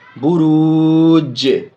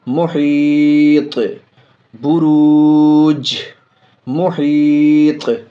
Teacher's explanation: جیم میں آواز لوٹے گی، جیم ساکن ہے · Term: قلقلہ